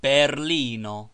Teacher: Every word is accented on the last syllable but one